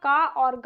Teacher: अल्प प्राणों में कम श्वास, कम वायु, कम मतलब है इसमें जब हम उच्चारण करते हैं अल्प प्राण में तो हमें उच्चारण करते वक्त हमें मतलब कम मेहनत होती है, कम हमें ऊर्जा खर्च करनी पड़ती है।